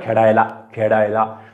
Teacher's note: बऱ्याच जणांच्या असं बोलण्यामध्ये ळ च्या ऐवजी ड ऐकू येतं